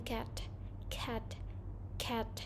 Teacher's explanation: The next one is velars, sounds produced by placing the back of the tongue against the soft part of the roof of the mouth, like k in cat, cat, cat.